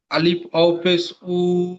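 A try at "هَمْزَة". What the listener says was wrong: হ্যাঁ, আলিফ নয়, আলিফ তো খালি থাকে। আলিফের উপরে যখন জাবার পেশ থাকে আলিফ হামজা হয়ে যায়।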